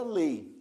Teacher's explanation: Não há obstrução à passagem de ar, portanto, a palavra lei contém um ditongo oral.